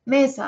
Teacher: el acento fonético de mesa está en me